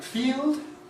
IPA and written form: fiːld (field)